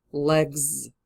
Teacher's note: Just in our introductory example, if the word finishes at G and G is voiced in English, this final S will change into a Z in pronunciation